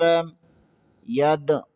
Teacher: یہاں پر دال کے اوپر جزم ہے، یہاں پر کلکلا ہوگا۔